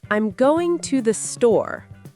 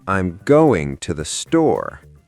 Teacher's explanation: The stress is on going and store.